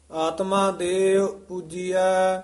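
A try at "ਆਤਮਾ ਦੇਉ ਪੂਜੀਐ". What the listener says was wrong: आत्मा देव जिहड़ा पाठ है ये संबंधक पाठ है देव पूजिया नहीं कहना आत्मा देव पूजिया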